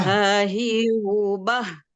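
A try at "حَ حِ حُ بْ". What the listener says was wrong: Nah, agak ditekan Ibu. Ha, ha, hi, hu, bah. Jadi tetap ditekan Ibu ya, agak ditekan memang karena dia di ujung tenggorokan sini kan, di bawah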